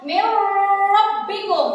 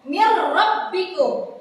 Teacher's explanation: Jadi harus dibaca jelas, dimasukkan tanpa mendengung.